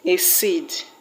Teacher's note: The word exCEED will have its stress on seed.